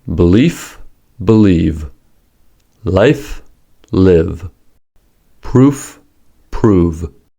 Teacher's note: Each pair sound is produced exactly the same way except for voicing.